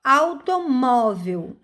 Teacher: automóvel mor está na penúltima sílaba então é paroxítona